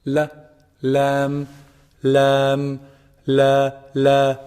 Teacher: not the farthest part like cough it's closer to the mouth lamb's actually pronounced from the tip of the tongue when it hits the gum or the gums of the upper incisors